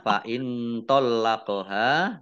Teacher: nun sukun bertemu dengan huruf tho bacaan Ikhfa dibaca samar-samar